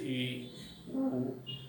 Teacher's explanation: वे स्वर वर्ण होते हैं जिनका उच्चारण करते समय मुंह पूर्ण रूप से बंद होता है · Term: समवृत स्वर